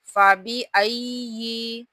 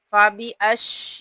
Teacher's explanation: या को मुशद्दद है सख्ती के साथ पढ़ते हुए, लेकिन या के अंदर शीन की आवाज़ पैदा नहीं करनी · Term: या मुशद्दद